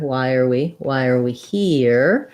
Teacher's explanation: here is really 1 syllable word, but it'll be about as long as all 3 of these other words. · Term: length